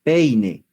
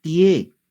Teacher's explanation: los diptongos decrecientes la boca se cierra va de una mayor a una menor abertura